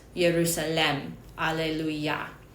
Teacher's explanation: a word whose final syllable is the accented syllable